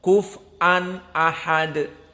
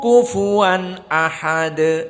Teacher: Maka qiraah Hafs an Asim dibaca dengan waw, tidak diganti hamzah